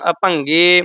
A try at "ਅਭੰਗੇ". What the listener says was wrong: ਗਗਾ ਹੀ ਪਿੱਛੇ ਬੋਲਣਾ ਘਾ ਨਹੀਂ ਬੋਲਣਾ।